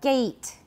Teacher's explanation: But A, E, those are both front vowels. So this is a front vowel, but it's a diphthong.